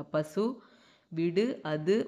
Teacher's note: தனி குறில் எழுத்தை அடுத்து வரும் வல்லின உகரங்கள் ஒரு மாத்திரை அளவுக்கு முழுமையாக ஒலிக்கும்